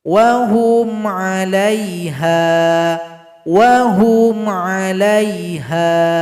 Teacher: mim sukun berjumpa dengan huruf Ain itu dibaca dengan izhar syafawi dibaca jelas tanpa berdengung